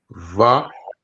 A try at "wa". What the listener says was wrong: So this would be like a W sound, like wa.